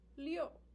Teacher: That's the descending fourth tone. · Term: descending 4th tone